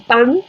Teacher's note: la lengua se apoya en el velo del paladar, al final del paladar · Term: velar de la N